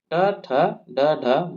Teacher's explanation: इनका उच्चारण जिभ्या को ऊपर मोड़कर मूर्धा से किया जाता है। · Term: मूर्धन्य वर्ण